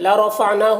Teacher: نا میں الف مدہ ہے، ایک الف کے برابر کھینچیں گے. لا رفعناہ را کے اوپر زبر ہے، را کو پر پڑھیں گے. نون میں کھڑا زبر ہے، یہ الف مدہ کی طرح ہوتا ہے تو اسے ایک الف کے برابر کھینچیں گے.